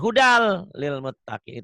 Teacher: dibacanya nyamber ke huruf yang bertasjid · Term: idgham bila guna